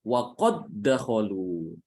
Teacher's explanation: Maka dal di sini yang pertama itu tidak boleh dibaca qalqalah. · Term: idgham